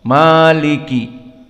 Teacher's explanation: Maliki, mim, lam, kaf, kulluha harf muraqqaqah. Semuanya harf muraqqaqah, sehingga kita membacanya dengan datar.